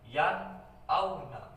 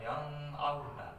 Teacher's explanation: Hamzah ini termasuk huruf idhar. Nun mati bertemu dengan huruf idhar, nun mati, jadi dibacanya jelas yan auna, bukan yang auna, yan auna, jadi jelas ya.